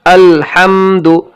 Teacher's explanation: ایک غلطی یہ ہوتی ہے، عموماً پڑھتے ہیں بہت سے حضرات الحمدو، تو الحمدو نہیں ہونا چاہیے، بلکہ لام کے اوپر جزم ہے تو بالکل اسے جزم دے کر پڑھنا ہے۔ اس لام کے اوپر زبر کی آواز نہیں آنی چاہیے، زبر کی بو بھی نہیں آنی چاہیے، بلکہ الحمد، اگر یہ پڑھیں گے الحمد، الحمد میں لام کے اوپر زبر کی بو آ رہی ہے، زبر کی آواز آ رہی ہے، جو کہ غلط ہے۔